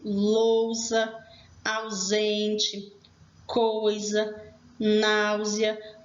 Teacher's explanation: Eu tenho as duas vogais juntinhas na mesma sílaba. Após elas, eu tenho o som de Z, que no caso aqui é grafado com S.